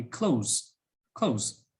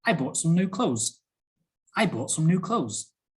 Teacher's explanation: So you can pronounce clothes the same way as close, like close the door. So just take out the v sound and say close, close. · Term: no v sound